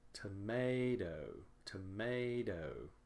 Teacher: because the second syllable is stressed it is longer louder and higher in pitch